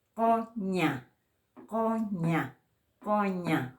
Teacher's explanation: En castellano se dice fricativo porque lo pronunciamos como si estuviéramos pronunciando con la glotis, con la garganta. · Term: sonido fricativo